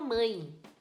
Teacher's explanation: Então, tem uma sílaba só, essa palavra não separa. O A é a vogal de verdade e o E, que tem som de I, é a semivogal.